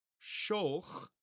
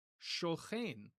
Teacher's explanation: it's just not going to be pronounced as a k. It's going to be pronounced as a ch.